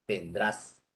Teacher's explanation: Cuando dices vendrás, la entonación es ascendente.